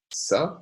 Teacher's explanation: the voiceless sibilant alveolar fricative